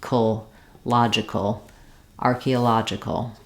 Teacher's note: we don't have much of a vowel there if there's any vowel it's going to be a short little reduced a sound